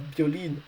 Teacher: in singular we want the last syllable to be stressed, the last I, and not the O from the last but one syllable